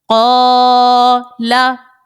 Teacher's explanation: یہاں پر دیکھیں قاف حروف مستعلیہ ہے, اس کو موٹا پڑا, اور الف سے پہلے زبر ہے چونکہ اسی لیے الف مدہ کا قاعدہ ہے, ایک الف کی مقدار اس کو کھینچ کر ہم نے ادا کیا